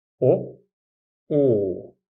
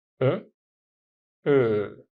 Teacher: the O sound requires tighter lips than the Ö sound